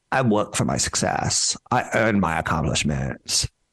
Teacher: she's got a little bit of that vocal fry and then a little bit of a fake German accent going